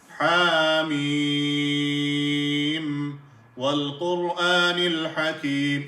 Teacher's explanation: Ha is one alif or 2 harakat. Mim is 3 alif or 6 harakat.